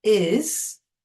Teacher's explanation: it sounds a little bit z, but it's spelt with an s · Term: z sound